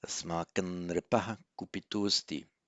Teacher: you'd write that as anusvara and pronounce it as an N because of the following N